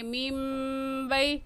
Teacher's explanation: یا ساکن سے پہلے زبر آ گیا ہے تو یہ یا لین ہوگا اور لین کو کھینچ کر نہیں پڑھتے